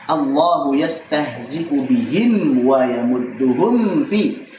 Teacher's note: Yastahzi'u bihim wa mim sukun ketemu waw, wa yamudduhum fi mim sukun ketemu fa. Ini hati-hati, dua-duanya izhar syafawi, dibaca jelas mimnya.